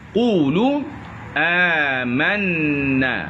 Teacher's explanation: Amanna juga dalam biji halkum.